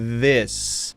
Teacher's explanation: My teeth are separated, not clenched down on my tongue. I'm feeling the air moved between my top teeth and my tongue